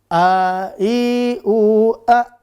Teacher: makhrajnya di tenggorokan bawah. Sifat yang sudah kita pelajari ada 2. Napasnya berhembus dan tipis. Maka nggak boleh dibaca o. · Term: huruf hamzah